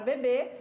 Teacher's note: a sílaba tônica aqui na mesma palavra bebê é aquela que a gente pronuncia com maior intensidade por mais força ou seja a segunda